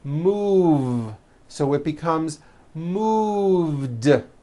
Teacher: move has that voiced v sound